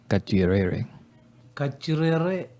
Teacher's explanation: you can hear a little bit of going around the R there, the heavy R